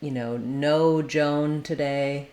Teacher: when you see OA together, it's going to have that O diphthong O sound. I've written it here with OH to make it clear that it's the O.